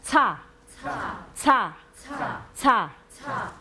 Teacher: 이빨 뒤에 닿았다가 떼면서 바람 새는 소리가 납니다